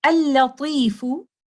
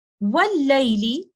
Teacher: Laam At-Tareef is Saakin followed by a voweled lam. So the first lam is completely merged into the second lam. The sound that we hear is from the second lam. This is idgham kamil of lam sakina because the first lam has completely merged into the second lam. · The sound that we hear is from the second lam. This is idgham kamil of lam sakina because the first lam has completely merged into the second lam. That's why the second lam carries a shadda, indicating the complete merging of the first lam.